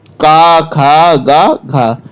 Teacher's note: कंठ ध्वनि में दोस्तों हमारा का वर्ग आता है